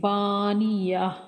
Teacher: با کو کھینچیں گے، با مدہ ہے اور آگے تین حرف جو ہیں ان کو بغیر کھینچے پڑھیں گے